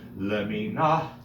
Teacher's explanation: the hey has a mapik in it, which makes it a hard or an aspirated hey